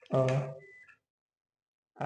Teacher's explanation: इसमें केवल जो हवा होती है वो मुंह से, ठीक है, मुंह से निकलती है, इसलिए इसको निरनुनासिक कहते हैं